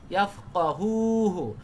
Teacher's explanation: দুইটাই হু একটা হুতে টান আর একটা হু তাড়াতাড়ি